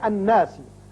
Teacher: نون حرف مشدد ہے اور حرف غنہ ہے، یہاں غنہ کریں گے۔ نون کے اوپر جب بھی شد آ جائے تو غنہ کرتے ہیں۔